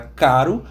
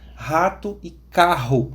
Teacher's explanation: existem dois sons diferentes para R. Um som mais vibrante, como na palavra caro, e outro som mais soprado, mais forte, como na palavra rato e carro.